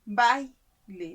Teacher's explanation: La mayor fuerza de voz está en la A, baile, ¿no? Y la I se reduce. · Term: diptongo